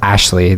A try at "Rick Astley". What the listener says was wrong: Who's Rick Astley? Yeah, that's Astley, not Ashley. Astley.